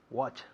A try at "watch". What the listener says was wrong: Eso es.